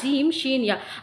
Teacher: बीच ज़बान ऊपर के तालु से मिलके क्या अदा होता है, जीम, शीन, या